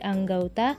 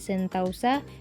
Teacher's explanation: perubahan vokal tunggal ke vokal rangkap ini masih diucapkan dalam satu Puncak kenyaringan jadi masih dalam satu silabel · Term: diftongisasi